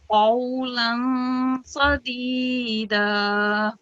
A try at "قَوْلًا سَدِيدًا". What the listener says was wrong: And this theme, don't pronounce it in a thick way, otherwise it will sound like a sword. قولا سديدا.